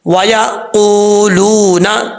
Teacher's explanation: قاف حروف مستعلیٰ میں سے پر پڑھا جائے گا اور واو مدہ ہے, ایک الف کی مقدار اس کو لمبا کر کے پڑھیں گے. وَيَقُولُونَ.